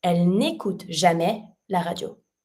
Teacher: But écoute, that means listen, starts with a vowel. So I can remove my e from ne and I'm going to connect my phrase.